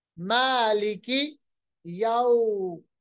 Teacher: واو ساکن ماقبل زبر، واو لین، نرمی کے ساتھ ملائم ادا کیجیے